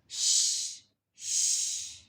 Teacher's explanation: for sheen is pronounced from the middle of the tongue